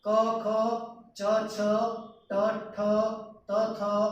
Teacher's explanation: જે સ્થાનના પહેલા અને બીજો વ્યંજન ક અને ખ એ કેવા છે? અઘોષ છે